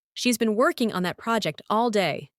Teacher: The stress is on been working, project, and day.